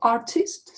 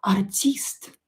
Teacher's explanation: In English we have artist, so I stress. In Russian i is stressed.